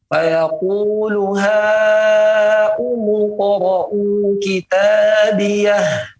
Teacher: Jangan dibaca seperti itu 2 harakat. Karena ini merupakan mad wajib yang harus dibaca 4 sampai 5.